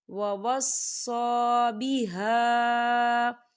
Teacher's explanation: وَوَصَّى بِهَا، بِهَا یہاں دیکھیں خالی الف سے پہلے زبر ہے، الف مدہ بھی ہو رہا ہے اور اس کے اوپر مد بھی ہے، تو ہم اسے چار حرکت کے برابر کھینچ کے پڑھیں گے۔